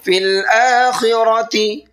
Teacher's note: خا کو بھی پر کرنا ہے اور را کو بھی پر کرنا ہے